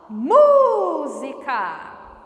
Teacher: O mu é tônico, então é uma proparoxítona. Tem que receber acento.